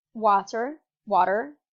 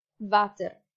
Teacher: w's that become a sort of v